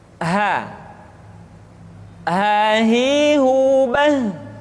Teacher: huruf ha dikeluarkan dari tenggorokan yang terjauh, sama seperti kita mengucapkan huruf a.